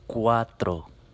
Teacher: make our vowels pure and make our r a nice bounced r to do that remember the t in front of it bite